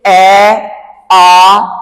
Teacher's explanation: ਨੀਵੇ ਸਵਰ ਜਿਨਾਂ ਨੂੰ ਉਚਾਰਨ ਕਰਨ ਸਮੇਂ ਜੀਭ ਦੀ ਸਥਿਤੀ ਸਭ ਤੋਂ ਨੀਵੀਂ ਰਹਿੰਦੀ ਆ